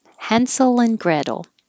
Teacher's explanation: We're pronouncing these names American English style, so the T will change to a D and the A is an A, Hansel. And instead of and, it can just shorten to N